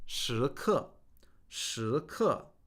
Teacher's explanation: Second tone, fourth tone means moment.